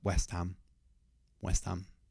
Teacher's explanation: we can cut the h off ham. So it'd be more like West Ham.